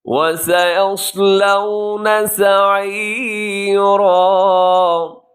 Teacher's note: وَسَيَصْلَوْنَ حرف صاد کو موٹا رکھیے گا اور سین کو باریک رکھیے گا. سین باریک ہوتا ہے ہمیشہ.